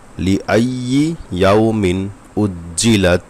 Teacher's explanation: তানবিন থাকলে তানবিনের পরে ইজহারের একটু অক্ষর আসছে হামজা, যে কারণে এখানে গুন্না ছাড়া স্পষ্ট করে পড়তে হবে।